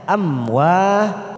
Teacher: Amwa fathah diikuti alif 2 harokat kita panjangkan